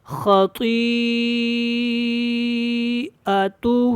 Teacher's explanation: دیکھنا ہے کہ اس کے بعد حمزہ آ رہا ہے تو حمزہ کو تھوڑا سا نا جھٹکے کے ساتھ ادا کرتے ہیں الگ کر کے